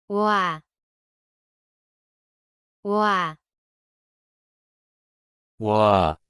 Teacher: Start with rounded lips for o and quickly move to the a position.